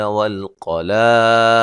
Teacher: دال پہ قلقلہ کریں گے وقف کی صورت میں